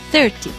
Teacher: in the word 30 the stress is on the first syllable